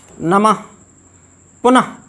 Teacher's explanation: ह और विसर्ग दोनों का उच्चारण स्थान कंठ है